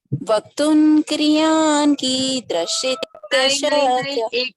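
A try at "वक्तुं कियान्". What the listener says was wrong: नहीं, एक मिनट, क्रियान नहीं, कियान, कियान, कियान,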